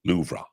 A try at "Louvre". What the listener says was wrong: No, you're saying Ra. You say Louvre. Yeah, it's like a breath. It's like a little sigh at the end of the word. Louvre.